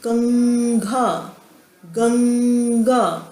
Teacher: हल्का सा पीछे ग की आवाज़ आती है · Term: पंचम वर्ण